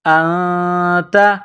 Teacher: نون ساکن کے بعد تا ہے تو یہاں پر اخفا کریں گے، آواز ناک میں چھپائیں گے